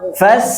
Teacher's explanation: ngalir ngalir napas sama suaranya dua-duanya ngalir